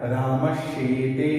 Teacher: उदाहरण देखिए, जैसे रामस शेते, रामस में यहाँ दंत स है, उसके पश्चात योग होना चाहिए इनमें से किसी का योग है, शेते का श है, मिला में योग, तो इस रामस के दंत स के स्थान पर तालव्य श हो जाएगा